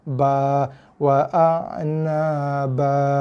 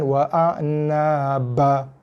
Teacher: Yang salahnya bukan pada bunyi ba, yang salahnya pada harakatnya tak cukup, 2 harakat. Lajakkan sikit.